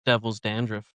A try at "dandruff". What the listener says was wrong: Dandruff? There's no T at the end of dandruff. Dandruff. Dandruff.